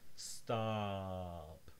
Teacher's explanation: It's not rounded lips. It is lips like spread out. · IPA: ɑ